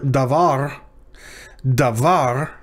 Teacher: notice the stress is on the last syllable as it usually is in hebrew so the syllable so that so var is the tonic syllable